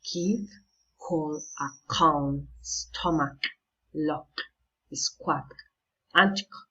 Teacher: The place of articulation of the letter K is a velar.